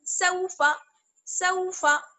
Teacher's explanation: فا کو ہمیں جلدی سے ادا کرنا ہے کیونکہ فا الف زبر فا نہیں ہے بلکہ کیا ہے، فا زبر فا.